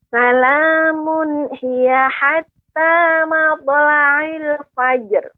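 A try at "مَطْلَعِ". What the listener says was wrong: Nah, untuk to ya, mautu tebal Ibu karena kita qalqalah pada huruf yang isti'la. Ya, mautu. Mautula'il. Kemudian tadi sedikit Ibu salamun hiya. Tadi ada sedikit berhenti. Salamun hiya. Nah, seharusnya mengalir. Salamun hiya.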